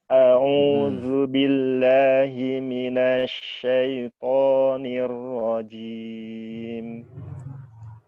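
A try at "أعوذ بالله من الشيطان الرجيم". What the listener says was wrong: Pokoknya kurang tebal, Ustaz. Nirro Nirrajim. Ro, tebelin. Nirro. Panjangin dan. Nirro.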